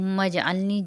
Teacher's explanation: اللہم پہ اللہ کا لام موٹا اور میم پہ میم مشدد 1 الف کی مقدار۔ اجعلنی، جیم کے اوپر قلقلہ ہوگا کیونکہ جیم ساکن ہو رہا ہے